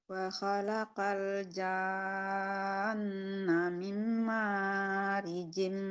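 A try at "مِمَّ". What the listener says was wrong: Mimnya kurang dengung. Mimnya kurang dengar, Bu. Mim. Dengungkan lagi coba sekali lagi.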